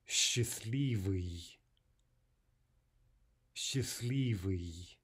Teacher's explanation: In the word for happy, we drop the te